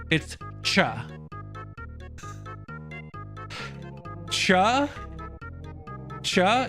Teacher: It's literally sh with a t pronounced at the same time at the exact same time.